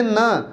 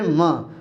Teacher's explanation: हमारी नाक से हवा ज्यादा निकलती है इनको उच्चारण करते समय हमारी नाक के माध्यम से इनका उच्चारण करना पड़ता है